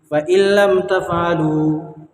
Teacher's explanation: لام کی صورت میں بغیر گنہ کے ملا کر پڑھیں گے، ٹھیک ہے؟ اس کو ادغام بلا گنہ اور ادغام تام بھی کہتے ہیں، ٹھیک ہے دوستو؟